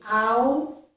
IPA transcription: ɑʊ